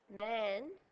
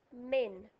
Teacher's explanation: We've changed the at sound to an et sound.